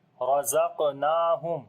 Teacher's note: Ra we read in heavy sound. On the qaf we make qalqala, which is the weak qalqala. Noon we long due to standing fatha.